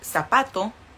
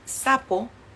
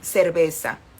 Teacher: También la letra Z o la S o la C, mexicano pronuncia muy parecido.